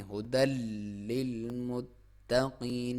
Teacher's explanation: پہلے لام کو آپ تھوڑا سا دباؤ سے پڑھیں گے اور تا کو بھی دباؤ سے، لیکن تا کو باریک پڑھنا ہے اور قاف کو موٹا پڑھنا ہے۔